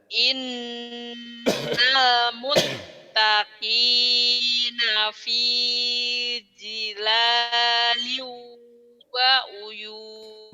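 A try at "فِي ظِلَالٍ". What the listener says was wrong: Bukan jila, zila, zo, zila, zo, zila. Zila, bukan dila ya, bukan di,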